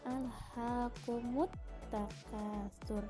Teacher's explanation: ada alif lam yang disamarkan karena masuk kepada huruf ta yang bertasydid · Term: alif lam samsiyah